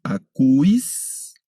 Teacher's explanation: Este diptongo se lee I, únicamente como I